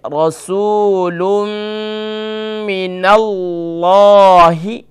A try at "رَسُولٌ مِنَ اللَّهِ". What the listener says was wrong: ہاں، یہاں را پر رسول کی جو را ہے اس میں تھوڑا سا آپ تکرار زیادہ کر رہی ہیں، تھوڑا سا اس کو شارٹ کریں.